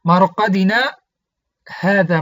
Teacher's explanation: مرقدنا گفتم، آواز را مقدار 10 حرکت قطع کردم، با همون نفس که من مرقدنا خواندم، بعدا آواز را قطع کردم، با همون نفس هذا را ادامه دادم، یعنی خواندم.